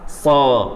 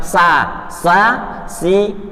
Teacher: So ini pakai lidah ya. Makhrajnya seperti huruf za dan sin, namun pengucapannya lebih tebal. Jadi yang dinamakan tebal itu ujung lidah sini kita angkat ke langit-langit.